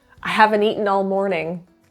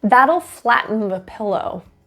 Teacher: Notice the first T in that'll is actually pronounced as a D. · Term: flap T